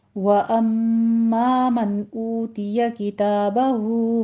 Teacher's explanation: किताबहु में मद्दे सिला सुगरा है, 2 काउंट करेंगे